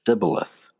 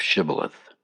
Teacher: But the Ephraimites, due to their dialogue dialect, they could not pronounce the sh sound, and they would say sibboleth instead of shibboleth